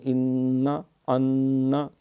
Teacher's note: نون جب مشدد ہو تو غنہ ہوتا ہے، ایک الف جتنی دیر لگتی ہے